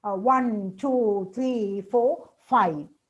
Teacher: The last one falling, all the others with rising. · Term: listing